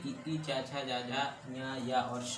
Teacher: तालु से ई चा छा जा जा या और शा बोला जाता है।